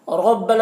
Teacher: را کے اوپر زبر ہے، را کو پر پڑھیں گے